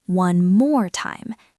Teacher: You usually put the stress on more.